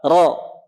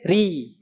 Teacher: Dia punya sifat tafkhim, tebal, dibaca tebal, ro. Dibaca tarkik tipis, ri. Ri, ya. Boleh juga tafkhim tarkik, boleh dibaca tebal atau boleh dibaca tipis. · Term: hukum ro